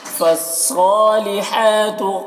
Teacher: सौद को पुर पढ़ेंगे और खड़ा ज़बर है जो अलिफ मद्दा की तरह है